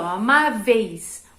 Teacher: O I, ó, amáveis. O I é mais fraquinho, então é uma semivogal